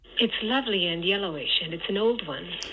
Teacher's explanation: So we have an H star on lovely, a downstepped H star on the first syllable of yellowish, and then there's kind of this dip in F0 and a bit of a pause which we're going to signify with this notation here.